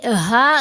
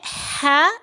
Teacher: ये हा गले के बिल्कुल नीचे वाले हिस्से से, चेस्ट वाली साइड से अदा होगी, और ये है हा, ये गले के दरमियान वाले हिस्से से अदा होती है